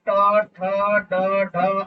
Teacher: है वो ताल है ताल के पीछे एक गड्ढा है और गड्ढे के पीछे जो ऊंचाई है उसे मुर्धा कहते हैं और वहां से जो ध्वनियां उच्चारित होती है उन्हें मूर्धन्य ध्वनियां कहते हैं